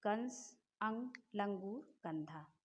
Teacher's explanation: इसके उच्चारण में हवा केवल नाक से निकलती है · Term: अनुस्वार